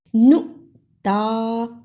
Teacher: نون پیش حمزہ نو، تا کھڑی زبر تا، اسے تھوڑا سا لمبا کر دیا